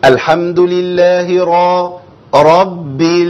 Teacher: راء عليها فتحه وراء عليها ضمه يبقى دول حروف ايه دي راءات مفخمه تخينه